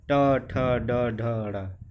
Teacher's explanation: मूर्धन्य अर्थात ट वर्ग, मुंह के भीतर की ऊपरी छत का अगला हिस्सा